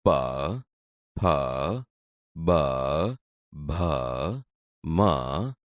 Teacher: તે બોલતી વખતે હોઠ એકબીજાને અડે છે તેથી આ ઓષ્ઠ્ય વ્યંજન છે